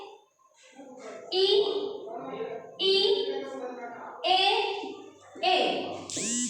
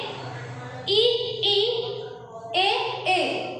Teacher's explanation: ऐसे स्वर जो जीभ के आगे वाले हिस्से से बोले जाते हैं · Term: अग्रभाग